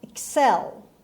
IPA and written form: ɪkˈsel (excel)